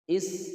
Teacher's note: Is di sini ada huruf sin, harus dibaca berdesis keluar anginnya